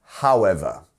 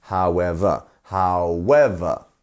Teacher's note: so it's however. It's on the second beat. However. However.